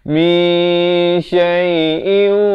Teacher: Daripada min jadi mi sebab dia nak masuk ke shin. Jadi dia tak sampai ke shin lagi, dia hampir ke shin itu. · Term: ikhfa hakiki